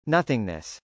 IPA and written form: nˈʌθɪŋnəs (nothingness)